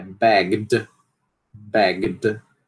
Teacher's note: Porque é um som vozeado, som final vozeado